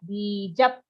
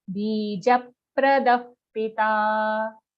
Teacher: after you say ja, just immediately close your lips. That way the effect of the aghat will come.